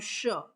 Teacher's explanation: हो जाता है उष्म व्यंजन जिन व्यंजनों का उच्चारण करते समय हवा तेज गति से मुख से रगड़ खाने के कारण उष्मा पैदा होती है